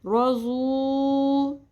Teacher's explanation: ضاد پیش واو ساکن. پیش کے بعد واو ساکن حرف مدہ بن جائے گا، اور یہاں پہ پیش کو 1 الف کے برابر کھینچیں گے